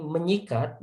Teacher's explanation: Nah, ini terjadi peluluhan ya, peluluhan. Jadi bunyi s pada kata sikat itu diluluhkan menjadi bunyi n ya, bunyi ny